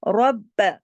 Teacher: کہ جب را کے اوپر زبر یا پھر پیش یعنی زبر یعنی فتحہ اور پیش یعنی دمہ لگی ہو تو را موٹا ہوگا، جیسا کہ یہاں پر آپ دیکھیے کہ را پر زبر ہے، اس لیے ہم را کو موٹا پڑھیں گے